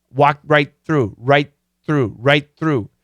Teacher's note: we don't finish the T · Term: stop sound